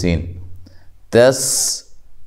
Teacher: سین کو باریک سیٹی کے ساتھ ادا کرنا ہے